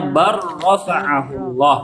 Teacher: Jadi jangan dibaca lamnya. Lamnya nggak boleh terdengar. Bal rafa'ahullah. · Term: diidghamkan